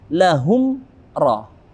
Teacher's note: mim mati bertemu dengan ra, maka sempurna bibir kita mengatup.